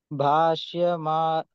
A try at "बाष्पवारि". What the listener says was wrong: Normal ba. Bashpavari. Bashpavari. Not the stress ba. Normal. Bashpavari.